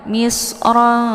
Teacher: cara bacanya tanwinnya disamarkan ke dalam huruf Fa Ya Misra jadi tanwinnya disamarkan kemudian siap-siap masuk ke huruf Fa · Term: Ikhfa